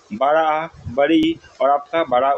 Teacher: इनके उच्चारण में अधिक समय लगता है या फिर इनके उच्चारण में दो मात्रा का प्रयोग होता है। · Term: दीर्घ स्वर